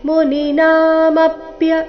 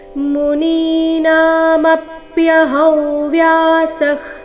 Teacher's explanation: ದೀರ್ಘ ಇದ್ದದನ್ನ ದೀರ್ಘ ಹೇಳಬೇಕು. ಮುನೀನಾ ನಲ್ಲಿ ನಿ ಮತ್ತೆ ನಾ ಎರಡೂ ಸಹ ದೀರ್ಘ.